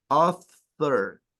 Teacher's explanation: Author es con la punta de la lengua, no con el labio.